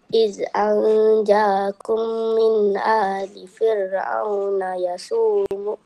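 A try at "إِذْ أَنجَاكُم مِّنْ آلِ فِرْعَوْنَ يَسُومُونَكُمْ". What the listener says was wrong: Yang ni bukan A ya. Yang ni adalah Hamzah. Yang ni adalah mat kecil. Mat asli kecil. So yang mat asli kecil tu adalah huruf jim.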